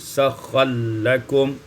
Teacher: sakhkhara lakum idgham ra fil lam, diidghamkan ra pada lam menjadi sakhkhal lakum